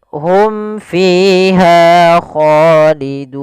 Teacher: kita hukumi dengan izhar syafawi, suara mimnya halus jelas